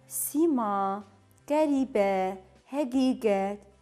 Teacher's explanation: İ saiti bəzi ərəb mənşəli sözlərdə ilk və orta hecalarda uzun tələffüz olunur.